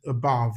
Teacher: it's stress on the second syllable. And the second syllable contains what we call the vowel number 10. That's V upside down.